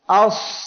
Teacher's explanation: জিহ্বার মধ্যখান উপরে তালুর সঙ্গে লাগতেছে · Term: ইতবাক